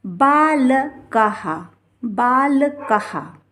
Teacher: विसर्ग लगा रहेगा तो इसका उच्चारण हा होगा